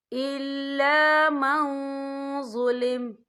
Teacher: بالسوء من القول الا من ظلم، یا دیکھیں الا من، یہاں نون ساکن ہے، نون ساکن کے بعد جو ہے ضا آ رہا ہے اور ضا جو ہے افا کا ورڈ ہے، تو ہم یا افا کریں گے، نون ساکن کی آواز کو ناک میں چھپائیں گے